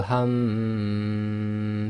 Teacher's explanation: your tongue isn't really being involved and the sound is being moved around in your nasal cavity, i.e. in the nose. And when we talk about the length, it is normally from 2 lengths long, i.e.